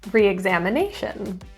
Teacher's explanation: The stress is in the fifth syllable.